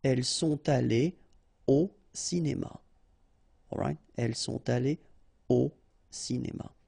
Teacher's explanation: So, no liaison after your participe passé here.